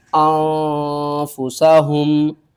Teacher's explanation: ہم نے غنہ نہیں کرنا بلکہ ہم نے اخفا کرنا ہے، نون ساکن کے بعد حروف اخفا میں سے فا ہے تو ہم اسے کیا کریں گے، آواز کو چھپا کر پڑھیں گے